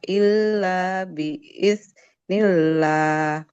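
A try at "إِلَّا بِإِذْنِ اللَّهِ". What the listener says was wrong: Illa biiz. Huruf zalnya lebih mengalir Ibu. Suaranya. Illa biiznillah.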